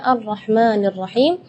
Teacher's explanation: tidak boleh lebih madnya dari 2 harakat